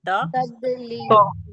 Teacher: जबान को हमने ऊपर सामने की दांतों दांतों की जड़ में लगाई त त फिर जबान की करवट को हमने लगाया मसूड़ों से · پہلے زبان کو ہم نے اوپر سامنے کی دانتوں کی جڑ میں لگائی